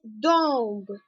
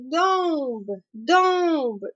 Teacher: бо вимовляється як он або ом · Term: носове